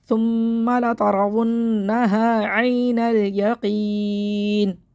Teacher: وقف کی صورت میں زیر ختم ہو جائے گا، نون ساکن ہو جائے گا